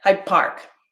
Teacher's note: the d sound actually becomes a b sound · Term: assimilation